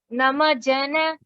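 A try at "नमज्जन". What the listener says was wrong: So there is a double ja there already, right? If you see ja and ja, and there is also dvitkam happening. So namajjana.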